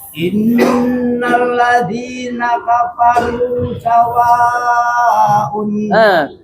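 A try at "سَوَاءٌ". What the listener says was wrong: Sawa harus 4 harokat, jangan kurang. 4 harokat. Innalladzina kafaru sawaun.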